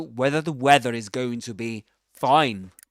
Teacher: right before a consonant sound or silence, in British English, in standard Southern British English, or received pronunciation, or even modern RP, which is the same as Southern Standard British English, the final ra is not pronounced